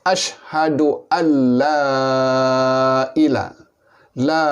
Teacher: Dan oleh kerana la ini bagi kalimah la ilaha, maka dia menjadi mad ta'zim, mad pengagungan. Maka sebaik-baiknya la ini dibaca panjang, boleh sehingga 6 harakat.